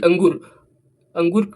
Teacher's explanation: अंगूर में जब उच्चारण करेंगे तब इसका जो ध्वनि जो है जोर से निकलेगा और नाक से निकलेगा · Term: अनुस्वार